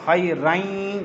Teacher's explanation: کیا لفظ پڑھیں گے؟ خیرین، جو آواز ناک میں جا رہی ہے، غنے کی آواز ہے، وہ ادغام کی ہے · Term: ادغام کے غنے